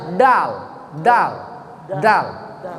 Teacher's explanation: Dal itu mahrojnya ujung lidah di belakang pangkal gigi atas